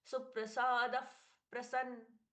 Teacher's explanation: अब यहाँ पर विसर्ग का परिवर्तन, फ जैसा प्रश्वास, प और फ के पहले फ जैसा प्रश्वास